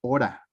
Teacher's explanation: Entonces, aquí ya estamos diciendo que hora, en términos de escritura, sí hay 4 letras, no sonidos, 4 letras. Pero en términos fonéticos, estamos diciendo que hora tiene 3 sonidos, una vocal, una vibrante y otra vocal